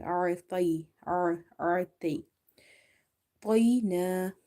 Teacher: Ta is heavy because it's a full mouth letter, which is also called musta'aliya letters.